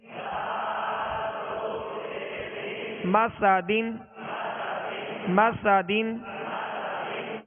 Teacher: سین کو سختی کے ساتھ اس میں سیٹی کی آواز پیدا ہوگی